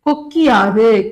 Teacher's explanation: இந்த கீழ இருக்கக்கூடிய இகரம் தன்னுடைய ஒரு மாத்திரை அளவில இருந்து அரை மாத்திரைக்கு குறைந்து ஒளிக்கும். அதுதான் என்னன்னு சொல்றாங்க குற்றிய லிகரம்னு சொல்றாங்க.